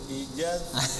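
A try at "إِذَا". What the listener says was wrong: Jadi jim lagi. Ya mungkin karena gini ya, kalau huruf zal dan sin itu tempat keluarnya berdekatan. Idhassa, idhassa. Jadi setelah ujung lidah nyentuh ujung gigi siri atas, langsung ujung lidah ke gigi siri bawah.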